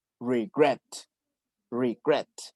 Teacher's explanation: Que termina en vocal, perdón, consonante, vocal, consonante. Entonces, aquí la última sílaba sí está acentuada